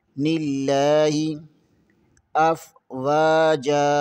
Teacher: واو کے آگے الف مدہ ہے، اسے بھی تھوڑا سا کھینچیں گے۔ یہاں پر لکھا تو افواجن ہے لیکن ہم آگے وقف کریں گے اس لیے افواجا پڑھیں گے۔ · نون زیر کے آگے لام آ جاتا ہے، اسے باریک پڑھیں گے۔